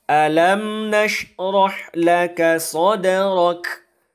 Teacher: Nah, dia ra itu berbaris fathah, maka kita baca dengan tebal. Maka cara membacanya, alam nashrah laka sadrak. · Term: dibaca dengan tebal